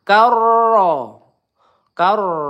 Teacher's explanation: Nah, di sini rnya tebal ya karena sebelumnya berharakat fathah. Karro kar ditekan juga ada tasdidnya